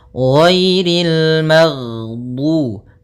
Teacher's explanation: Jahar yaitu tertahannya nafas kita. Jadi ketika melafalkan ghain, nafas kita tertahan, suara kita dialirkan.